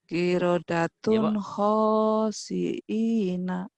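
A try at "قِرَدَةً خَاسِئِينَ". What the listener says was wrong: Kirodatun tun salah.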